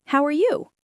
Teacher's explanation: My voice goes up on the word you. · What if I let my voice rise at the end? It sounds much more friendly and natural. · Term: Rising intonation